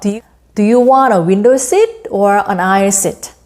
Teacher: 이렇게 둘 중에 하나 선택할 때는 A or B. A는 rising intonation, B는 falling intonation을 취하면 됩니다.